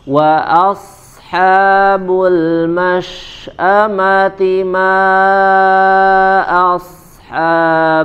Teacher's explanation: huruf ta marbut di akhir ayat ya dibaca dengan huruf ha ya dari pangkal tenggorokan